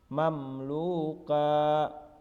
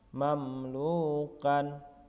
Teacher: mim sukun dibunyikan dengan terang dan jelas di bibir serta mulut tertutup, dan harus lebih jelas lagi apabila mim sukun bertemu huruf waw dan fa. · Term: izhar safawi